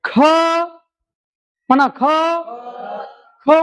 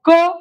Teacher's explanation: ख म्हणत असतानी ह चा बारीक उच्चार होतो